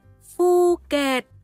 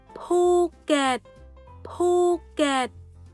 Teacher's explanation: thì được chú trọng vào phần bậc môi và không khí sẽ được đẩy mạnh ra ngoài thông qua khoảng trống giữa hai môi